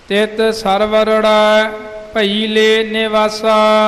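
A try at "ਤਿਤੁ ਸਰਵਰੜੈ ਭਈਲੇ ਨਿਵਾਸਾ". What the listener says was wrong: तित सरवरड़ै बिल्कुल ऐन सोच समझ के उच्चारण करना। सरवर तां पाठ सिद्धा ही है, नाल ड़ै लगा पर वखरा वखरा नहीं, इकट्ठा पाठ। तित सरवरड़ै भई ले, ये संबंधक पाठ आवेगा। भई ले वखरा भी नहीं ते बिल्कुल नाल भईले इकट्ठा भी नहीं। भई ले संबंधक पाठ आवेगा।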